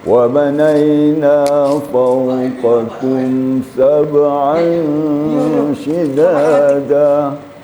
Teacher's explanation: Itu namanya ikhfa hakiki. Jadi harus disembunyikan atau disamarkan tanwin ke dalam shin. Jadi kemudian sedikit dilamakan sengaunya.